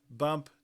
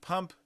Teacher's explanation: You can see the voicing in the B but not in the P. So the voice onset time is negative for B.